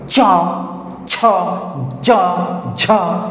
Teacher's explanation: এবার দেখো, চ ছ বর্গীয় জ ঝ, এই যে চারটা আছে না, এই চারটা না প্রচণ্ড ঘর্ষণ করে উচ্চারণ করার সময়। দেখবা চ ছ জ ঝ, এই চারটা উচ্চারণ করতে প্রচণ্ড ঘর্ষণ হয়, বাধা পায়, ঘর্ষণ করে। তাই জন্য এই চারটাকে আবার বলা হয় ঘৃষ্ট ধ্বনি।